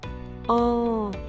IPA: ɑ̃